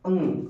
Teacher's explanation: अंग जब बोलते हैं तो नाक से निकलता है ना जैसी ध्वनि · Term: अनुस्वार